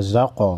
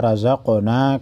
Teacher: قاف حروف مستعلیہ میں سے موٹا پڑھیں گے اور قاف حروف قلقلہ میں سے ہے، ہلا کر پڑھیں گے